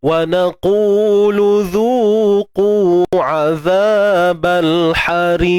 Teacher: Kemudian hujung tu pada qaf ada sifat lantunan lah, qalqalah kubra